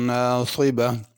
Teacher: ناصبہ میں صاد ہے، اس کو پر کر کے پڑھنا، ناصبہ سین سے نہیں پڑھنا